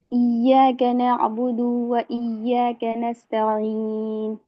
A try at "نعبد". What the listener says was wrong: हाँ नाअबुदु में 2-3 और स्टूडेंट नाअबुदु में हल्का वहाँ पे खींच रही है, तो नाअबुदु में खींचना नहीं है। इय्याका नाअबुदु व इय्या एकदम तुरंत ही नाअबुदु व इय्या।